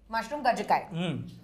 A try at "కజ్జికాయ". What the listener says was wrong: గజ్జికాయ కాదు మేడం, కజ్జికాయ.